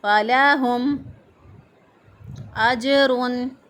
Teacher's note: ہا جو ہے اس کو ہم اقصی حلق سے ادا کریں گے، یعنی گلے کا وہ حصہ جو سینے کی طرف ہوتا ہے وہاں سے ہا ادا ہوگا